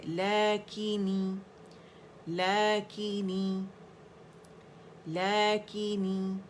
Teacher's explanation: اس میں جھول نہ آئے کہ نے کی آواز نہ آئے، کی نی کی آواز آئے